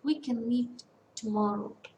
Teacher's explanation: when we write this sentence the stress falls on we meet tomorrow is a three syllable word and the stress falls on the middle syllable